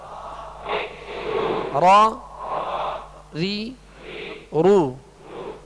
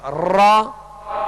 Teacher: آواز میں کپ کپاہٹ ہوگی، جسے راشا کہتے ہیں، کپ کپاہٹ ہوگی. وہ اس وجہ سے کہ اس کی خوبی ہے کہ اس میں تکرار کی مشابہت ہو، مکمل تکرار نہ ہو کہ را ہو جائے.